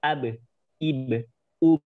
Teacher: Ketika ba keadaan sukun, dia memiliki sifat qalqalah. Jadi dipantulkan.